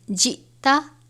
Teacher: حمزہ ساکنہ ہے حمزہ اور جزم ایک ساتھ ہیں تو یہاں جھٹکا دے کر پڑھیں گے